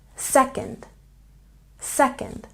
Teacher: Don't forget to stress the first syllable in second